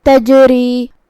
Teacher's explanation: را کے نیچے زیر ہے تو اس کا حکم ہے ترقیق، ہمیں اسے ہلکی آواز میں پڑھنا ہے · جیم پہ جزم ہے تو اس کا حکم ہے قلقلہ، ہم اس کو ہلاتے ہوئے یہ کلمہ کو ادا کریں گے